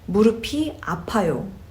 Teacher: That p sound gets rolled over to e, and you get 피, 무릎이 아파요.